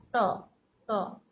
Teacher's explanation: কিঞ্চিত উল্টিয়ে উপরের মাড়ির গোড়ায় শক্ত অংশটা স্পর্শ করে দেখো ট ট মাড়ির গোড়ার শক্ত অংশটা স্পর্শ করে উচ্চারিত হয় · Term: মূর্ধন্য ধ্বনি